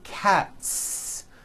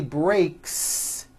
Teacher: the S you add also remains unvoiced